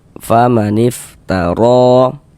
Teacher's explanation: Maka huruf ro kita baca tabkhim, kita baca tebal sehingga dengan menaikkan pangkal lidah kita ketika kita mengucapkannya.